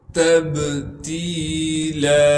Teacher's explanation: تا کو با ساکن سے ملا دیں گے اور با پر قلقلہ کیا جائے گا